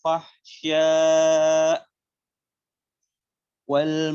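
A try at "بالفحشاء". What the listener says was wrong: disempurnakan huruf hamzah.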